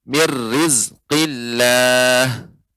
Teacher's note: Ya, ini kita dapatkan, ya, bisa permisa melihat, ya, ditandai dengan tasydid, ya, mir rizki, ya, ra-nya bertasydid, maka ini menunjukkan idgham kamil. Jadi nunnya ini dilebur ke dalam ra, jadi hilang